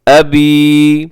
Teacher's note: اور آگے دیکھیے گا اس کے بعد جو لفظ ہے ید ابی، یہاں چھوٹی مد ہے جسے مد منفصل کہا جاتا ہے۔ ید ابی، ابی کو اپنے تھوڑا سا کھینچنا ہے کیونکہ یہاں پہ یا مدہ ہے۔